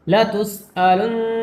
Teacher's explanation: کھینچ کر پڑھیں گے، یعنی کھینچنے کا مطلب یہ ہے کہ نون کو ناک میں چھپا کر پڑھ رہے ہیں ، لَتُسْأَلُنَّ تشدید کی وجہ سے گنگنا کے پڑھ رہے ہیں.